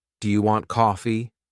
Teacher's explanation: my voice often goes up at the end. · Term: intonation